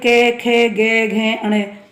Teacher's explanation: कवर्ग में के, खे, गे, घे, अणे और है विसर्ग। इनका उच्चारण स्थान कंठ माना गया है।